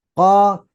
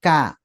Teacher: ke belakang untuk huruf q hati-hati sedikit mendekat ke tenggorokan jangan sampai mengambil tempatnya huruf gho dan K sip kemudian ke depan Nah itu huruf Kaf